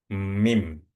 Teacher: Mim itu bibir bawah ketemu dengan bibir atas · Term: huruf mim